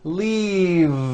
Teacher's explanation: If you stop the voicing at the end of the vowel E, then you would be saying leaf with an unvoiced F. And the word we're trying to say is leave with that voiced V. · Keep the voicing going throughout the whole word and voice the V.